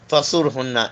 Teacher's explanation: حرف صفریہ whistling sound ہے